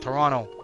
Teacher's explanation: I think yeah it's like a slang how we pronounce it so we don't say the T we we use an r instead